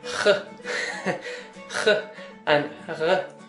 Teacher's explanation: you'll hear some ch and ch sounds, and they're the throaty sounds of Irish. Now you don't have to master these sounds, but it's much better if you can pronounce some of these.